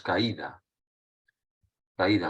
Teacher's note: diptongo pero como la está ahí es la más fuerte caída en este caso se rompe el diptongo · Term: hiato